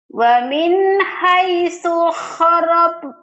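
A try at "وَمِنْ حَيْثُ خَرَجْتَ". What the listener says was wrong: Wa min haitsu kharaj, bukan horob. Wa min haitsu kharajta fawalli wajhaka syatral masjidil haram wa innahu lal haqqu mir rabbik.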